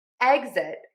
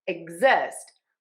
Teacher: Exit, we're stressing syllable number 1. Exist, we are stressing syllable number 2. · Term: syllable stress